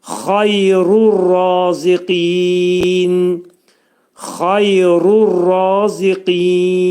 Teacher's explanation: Xayru dedikdə burada xa hərfi boğazın yuxarısından çıxarılacaq. Bunun məxrəci yə hərfi incə hərfdir.